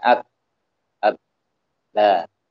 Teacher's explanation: Suara ba itu diucapkan dengan saling merapatkan dua bibir kita.